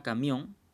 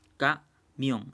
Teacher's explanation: Llevan la mayor intensidad de pronunciación en la última sílaba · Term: palabras agudas